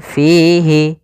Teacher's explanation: panjangkananya EMP harakat assama kemudian Fi di sini ada madii yaitu adanya kasrah bertemu Ya Sukun panjangnya dua harakat